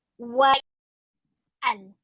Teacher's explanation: Nun mati tanwin itu bunyi jelas dan Hamzah al itu bunyi jelas juga.